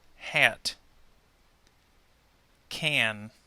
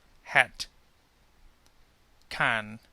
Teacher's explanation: The short relative letter A. In North American English, the short relative A, as we said IPA, A, is more of a nasal sound, higher in the head.